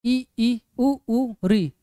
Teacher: इनको बोलने पर मुह लगभग बंद रह रहा है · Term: समृत